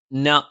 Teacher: നാവിന്റെ അറ്റം മേലെ മുൻബല്ലിന്റെ മോണയിൽ